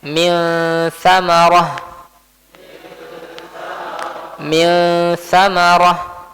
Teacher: Ikhfa hakiki. Maka di sini nunnya itu diikhfakan disembunyikan ke huruf tsa di atau di sisi huruf tsa. Maka di sini pun ada gunahnya.